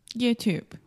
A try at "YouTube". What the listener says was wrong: So the last sound is the B sound. There is no E at the end. In writing, there is an E, but in speaking, the E is silent. YouTube.